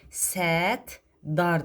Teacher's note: P B əvəzləməsi baş verir. Qoşa T-da T d əvəzləməsi baş verir.